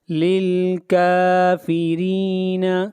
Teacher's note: للکافرین، کاف کو کھینچ کر پڑھیں گے، کاف کے اوپر کھڑی زبر ہے، اور یہاں پر را کو باریک پڑھا جائے گا اس لیے کہ را کے نیچے زیر ہے